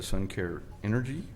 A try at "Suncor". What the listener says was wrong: Suncor. It sounded like Suncare.